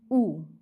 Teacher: उ का उच्चारण जीभ के पीछे भाग से होता है। इसलिए पश्य स्वर। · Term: पश्च स्वर